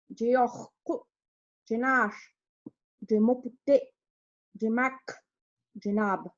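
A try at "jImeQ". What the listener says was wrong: So I hear your et becoming like an like an A sound, like jamak is what I heard.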